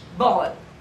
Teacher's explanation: It is a voiced plosive. It is, the vocal cords are vibrating.